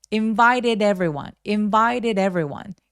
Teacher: Everyone도 마찬가지로 모음이라서이 D도 모험 사이에 끼어 있어요. 그래서 T가 둘 다 굴러가게 됩니다